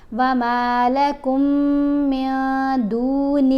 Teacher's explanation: نون کی آواز کو تو ہم نے ناک میں چھپا کے پڑھنا ہے لیکن ایک حرکت کے برابر ٹھہر کر بھی پڑھنا ہے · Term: اخفا